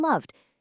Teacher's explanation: You have your soft vibrating d sound for voiced endings like in loved.